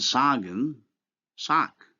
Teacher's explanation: In German, only the voiceless sound occurs in word final position. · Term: neutralization